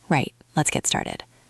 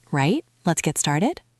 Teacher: you have to say it with a bit of a downward intonation